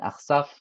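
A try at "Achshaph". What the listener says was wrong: It's Achshav. You said Achsaf.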